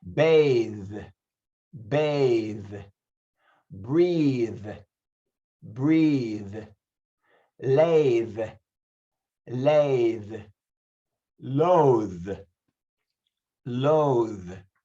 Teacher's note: some words that end with this voiced th sound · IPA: /ð/